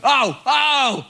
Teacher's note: HE'S COMMUNICATING ENTIRELY THROUGH A GLOTTAL STOP.